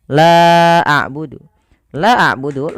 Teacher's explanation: La awalnya dua harakat bertemu dengan hamzah pada lain kata. Maka lanya dipanjangkan sepanjang empat atau lima harakat. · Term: mad jaiz munfasil